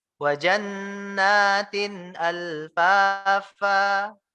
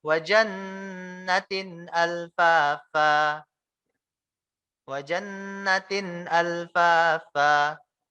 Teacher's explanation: Jadi nunnya nggak panjang.